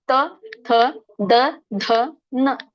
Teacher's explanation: ವರ್ಗ ಅಂದ್ರೆ ಅದನ್ನ ದಂತ್ಯ ವರ್ಗ ಅಂತ ಕರೀತಾರೆ ದಂತ್ಯ ವರ್ಣಗಳು ಅಂತ ಕರೀತಾರೆ ದಂತ್ಯ ಅಂದ್ರೆ ನಮ್ಮ ನಾಲಿಗೆ ದಂತಕ್ಕೆ ಹೋಗಿ ಹತ್ತುತ್ತೆ ದಂತ ಅಂದ್ರೆ ಹಲ್ಲು ಹಲ್ಲಿಗೆ ಹೋಗಿ ಹತ್ತುತ್ತೆ · ದಂತ ಅಂದ್ರೆ ಹಲ್ಲಿಗೆ ಹೋಗಿ ಹತ್ತತ್ತೆ ನೋಡಿ.